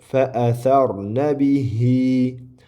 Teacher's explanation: Fa'asarna bihi deb ozroq ikki harakat cho'ziladi. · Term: mad